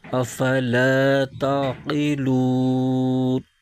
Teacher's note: آگے وقف تام کی علامت ہے، یعنی آیت مکمل ہو رہی ہے، تو یہاں پر وقف کریں گے تو اس صورت میں نون کی زبر ختم ہو جائے گی، نون ساکن ہو جائے گا